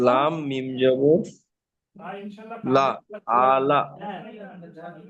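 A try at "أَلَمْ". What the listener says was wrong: লাম মিম যাবর লাম, লাম মিম যাবর লাম, আলাম, আলাম, আলাম, আলাম। আবার আলিফ টান দিচ্ছেন। আলাম, আলাম, আলাম,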